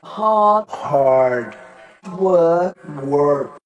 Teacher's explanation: في ال American work بتتنطق ال R